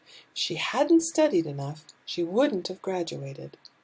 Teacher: We are going to have a stress on a negative and a stress on the main verb.